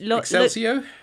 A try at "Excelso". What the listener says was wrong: Well, no, there's no I. So it's Excel, like the spreadsheet. So